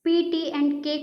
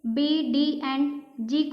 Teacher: P, T एंड K को जब हम लोग आर्टिकुलेट करेंगे तो पफ ऑफ एयर हमारे मुंह से रिलीज होगा, बट यहाँ पे B, D एंड G को हम लोग जैसे ही प्रोनाउंस करेंगे, हमारे मुंह के अंदर से कोई भी एयर पास नहीं होगा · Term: एस्पिरेटेड प्लोसिव